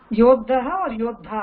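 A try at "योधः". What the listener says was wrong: no this is just dha right? This is not there is no double dha okay say that again yodha same yodha sainika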